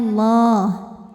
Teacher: lam jalalah dibunyikan secara tafkhim sebab huruf sebelumnya berbaris fathah maka dibacanya tebal